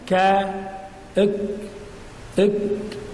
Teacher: والكاف من اقصى اللسان ايضا لكنها اسفل من القاف